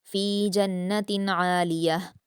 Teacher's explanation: इसमें नून मुशद्द है तो गुना करेंगे